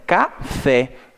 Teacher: a última sílaba ali, ela é a mais forte. Consideramos essas palavras como oxítonas.